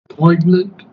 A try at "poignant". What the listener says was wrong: Yeah, that's the G is not pronounced. Poignant, poignant, poignant.